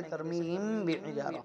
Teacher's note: میم ساکن کے بعد اگر با آ جائے تو اخفاء ہوگا، یعنی غنے کے ساتھ میں پڑھیں گے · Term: اخفاء شفوی